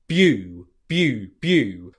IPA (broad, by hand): bju: